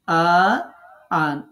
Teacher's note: আতে ৪ আলিফ টানতে হবে